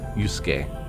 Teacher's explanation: that second U isn't pronounced. It's just Yusuke.